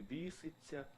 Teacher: на місці ятя він вимовляє, як і зараз в нашій літературній мові вимовляється і